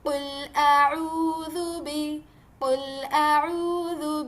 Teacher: اس کے بعد میں دیکھیے لیٹر عین، اعوذ، عین کو اچھے سے واضح کرنا ہے بالکل حلق کے درمیانی حصے سے